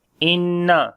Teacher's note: there is shad sign on the noon, we make gunna and we long